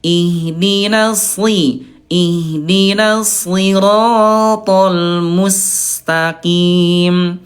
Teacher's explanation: Jadi Bunda huruf shad dia tetap dibaca tebal walaupun kasrah ya · huruf sin dia tetap tipis walaupun dommah atau sukun